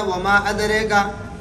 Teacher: وما ادریکا امالہ بھی دونوں راویوں کے لیے ہے